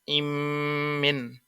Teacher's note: নুন সাকিনের ইদগাম মিমে করলো